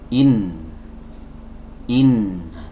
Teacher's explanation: Baik, kemudian masuk ke huruf yang kedua, yaitu huruf nun. Ya, huruf nun keluar dari ujung lidah, ya, ditempelkan ke gusi atas.